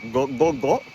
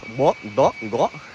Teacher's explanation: Chances are that you're making an implosive there, and you can just apply that to all sounds.